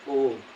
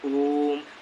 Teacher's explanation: ओम में अधिक समय लगा। ओम बोलिए तो ओम एकदम पूरा एकदम खींचता है। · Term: प्लुत स्वर